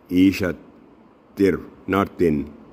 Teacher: ta will be merged with ra mushaddad without noon without nasal sound ishatir ra ra thick sound ra